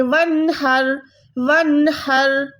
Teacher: نون کو ظاہر کریں گے، پروپر نون کو ہم فیل کریں گے، نون کو ناک میں نہیں لے جائیں گے